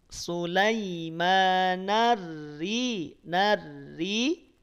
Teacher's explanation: ro bertasydid harokat kasroh dibaca tipis